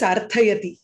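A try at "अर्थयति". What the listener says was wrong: అక్కడ వచ్చి మీకు మహాప్రాణార్థ అల్ప ప్రాణ కాదు సో అర్థయతి అర్థు తకార చెప్పాలి మీరు ఇక్కడ వచ్చి అల్ప ప్రాణార్థ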